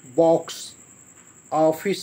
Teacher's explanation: आजकल अंग्रेजी भाषा के प्रभाव से हिंदी में ओ आगत ध्वनि का प्रयोग किया जाने लगा है, जो आ और ओ के बीच की ध्वनि है